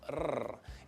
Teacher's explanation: Technically called an alveolar trill.